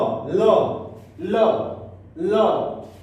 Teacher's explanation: इकर उच्चारण दंत से होता है, दंत से उच्चारण।